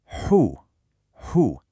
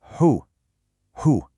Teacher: It becomes hu, hu. You should feel that deep breath passing right through your rounded lips.